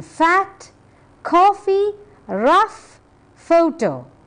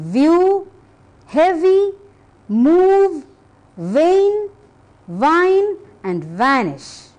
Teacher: f is voiceless V is voiced f as in fact coffee rough photo v as in view · Fur is voiceless, ver is voiced.